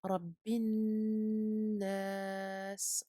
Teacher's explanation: on fait la liaison et on garde le noun très longtemps. Ici, il s'agit d'une runna akmal ma takoun et à ce moment-là, il faut vraiment garder la durée du noun très longtemps.